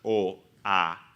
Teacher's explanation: lo que se llaman las vocales abiertas, o, a, la boca hace un círculo redondo